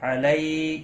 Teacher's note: یا لین ہے تھوڑا نرمی کے ساتھ کھینچ کر ادا کریں گے